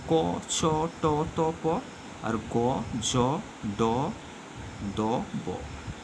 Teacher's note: ছ ট ট প আর গ জ ড দ ব অর্থাৎ প্রথম তৃতীয় উচ্চারণ করতে কম সময় লাগে তাই এরা অল্প প্রাণ